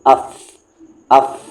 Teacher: فا کا مخرج نچلے ہونٹوں کو، جو نیچے والا ہونٹ ہے، یہاں پر ہونٹ رہنا چاہیے، نچلے ہونٹ کو اوپر کے دانتوں کے کناروں سے لگا کر کہیے، یعنی نیچے والے ہونٹ کو اوپر کے دانتوں سے لگائیے گا تو نکلے گا فا